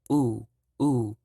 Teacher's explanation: if you can hear in my voice my tone is falling it's it's in the high right now but then it falls